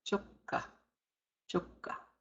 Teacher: Double consonant, double sound. Hold it a little bit longer.